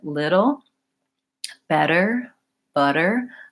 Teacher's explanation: I'm gonna just lightly touch up for that flap T